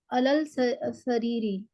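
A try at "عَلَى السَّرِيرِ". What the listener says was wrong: हाँ, हरफ शमसी आ गया, ठीक है, तो अलस सरीरी हो गया, ठीक है ना।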